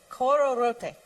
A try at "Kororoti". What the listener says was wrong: Do you notice how you are inflecting the end differently from what we are saying? Not that you should change. Just notice it. We are saying kororoti. You are saying kororote.